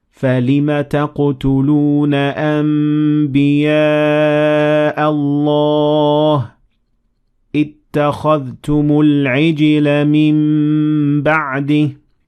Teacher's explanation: Iqlab means change, and when ba follows noon sakina, you should assimilate them into meme with 2 harakat